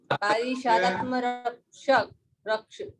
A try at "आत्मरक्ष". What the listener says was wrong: इसमें संधियां हैं, इस कारण से सीधा सीधा बोलने का अभ्यास करना पड़ेगा आपको, यहाँ तोड़ नहीं सकते।